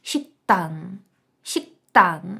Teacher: випадок к після неї йде Т Значить ми вимовляємо шіктан шктан в нас ти подвоюється ми робимо таку гарну напругу